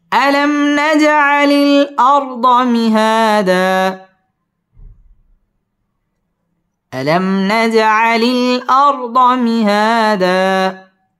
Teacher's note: আলাম মিম সাকিনে ইজহারে খাস, এখানে গুন্নাহ ছাড়া পড়তে হবে। নাজ জিম কলকলার হরফ, ধাক্কা দিয়ে পড়তে হবে।